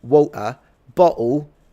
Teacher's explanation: using a glottal stop in space of an actual T makes you sound low class